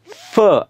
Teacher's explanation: दोन ओठाच्या साहाय्याने उच्चार होत नसून खालचा ओठ आणि वरच्या दाताच्या साहाय्याने उच्चार होतो म्हणून या फ चा उच्चार उर्दू मधल्या फ सारखा झाला त्याच्यातले